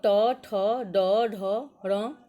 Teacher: इसका उच्चारण स्थान मूर्धा है। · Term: ट वर्ग